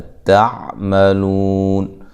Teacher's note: यहाँ ता को बारीक पढ़ेंगे